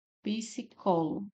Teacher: Então, aqui nós temos uma proparoxítona, né? Nossa sílaba tônica é o có, é a antipenúltima. · Nossa sílaba tônica é o có, é a antepenúltima, então, proparoxítona.